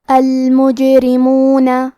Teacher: جیم پہ جزم ہے، لہذا ہمیں جیم کو قلقلہ سے پڑھنا ہے، اور قلقلہ کا معنی ہے حرف ساکن کو ہلانا، تو ہم حرف الجیم کو ہلاتے ہوئے یہ کلمہ کو پڑھیں گے. · حرف الرا کے نیچے زیر ہے، تو یہاں را کا حکم ہے ترقیق، یہاں ہمیں حرف الرا کو پتلی آواز میں پڑھنا ہے